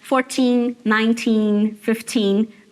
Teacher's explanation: os números com teen, o stress está lá no teen, tá? Então, 14, 19, 15, tudo no teen.